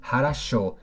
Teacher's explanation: La O se pronuncia como O únicamente cuando lleva acento, en cualquier otro caso se pronuncia como A, entonces por ejemplo esta palabra se pronuncia harasho, ya que el acento está en la última O, esa O se pronuncia como O y las demás como A